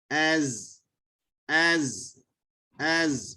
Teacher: keadaan hujung lidah itu dia ditekan ke belakang gigi hadapan sebelah yang di bawah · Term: zai